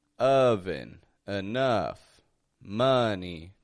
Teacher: the O that's in there sounding like an uh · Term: uh sound